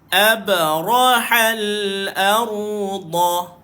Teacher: Abrahal arda. Tepi lidah, tak kisah kiri ataupun kanan. Dia sentuh kat gigi geraham.